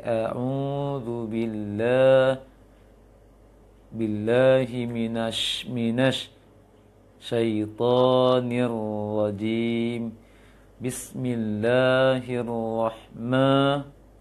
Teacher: huruf-huruf berharokat fathah mulai dari ta'awudz, bismillah dengan ayat-ayatnya masih kurang membuka, sehingga bunyi fathahnya mengarah ke e kebanyakan, dominan mengarah ke e. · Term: imalah